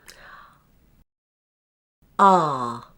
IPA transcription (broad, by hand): ɑː